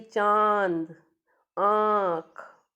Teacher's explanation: अनुनासिक जो होता है इसकी आवाज़ नाक और मुंह दोनों से आती है